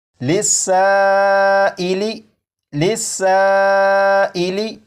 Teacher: مد متصل ہوگا، اور اسے بھی 2 یا 2.5 الف کے برابر کھینچ کر پڑھیں گے